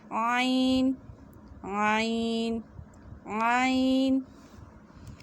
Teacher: اس کی آواز کو تھوڑا سا موڑ کے نکالنا ہے اور اسے باریک پڑھنا ہے